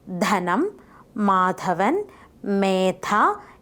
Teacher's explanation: The air current coming from the lungs is stopped by making a contact of the tip of the tongue with the upper teeth. The air released as an extra puff of air.